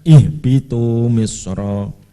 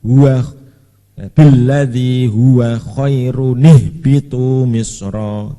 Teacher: Ya, kalau ada tanda shad kecil berarti itu hamzah wasol yang dibaca ketika menjadi permulaan, tapi hilang ketika diwasolkan dengan sebelumnya. Jadi kalau kita wasolkan huwa billadzi huwa khairun ihbitu misra, karena di tengah.